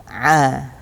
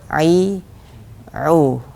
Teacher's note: Kalau dilihat dari makhraj, maka hamzah ini dia keluar dari tenggorokan bawah atau tenggorokan paling bawah atau aqsal halq, pangkal tenggorokan. Sedangkan ain ini keluar dari wasatul halq atau tenggorokan tengah.